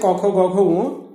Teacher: ক বর্গে যে 5টি বর্ণ রয়েছে, ক, খ, গ, ঘ, ঙ, এই বর্ণগুলি যখন আমরা উচ্চারণ করি তখন জিহ্বার গোড়ার দিক বা জিহ্বা মূল তালুর কোমল অংশ স্পর্শ করে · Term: কণ্ঠবর্ণ